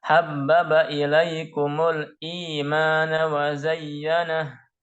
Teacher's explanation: Sehingga i itu dibaca 2 harokat. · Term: mad badal